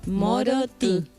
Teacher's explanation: es una I como la I nuestra del español, pero nasalizada.